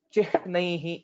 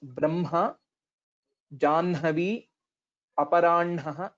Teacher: First we will have to say N and then it will become Ha.